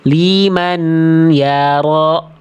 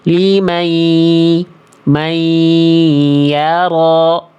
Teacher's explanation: Limai tuh udah enggak ada n-nya tinggal menyisakan masuk ke huruf ya-nya. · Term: dileburkan